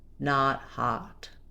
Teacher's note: our ah, not hot is an open, unrounded back vowel. By back vowels, we simply mean that there's space in the back of the mouth and the tongue is descending as we go. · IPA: /ɑ/